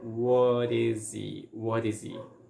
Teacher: is okay and he we are going to reduce like again we're going to eliminate the H sound and we are going to put like link everything together so it's going to sound like what is he what is